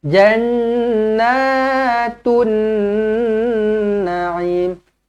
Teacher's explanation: nun sabdu wajibul gunnah, dengungkan dua harakat